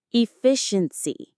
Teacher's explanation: E-fi-shen-si. The stress is on the second syllable, fi.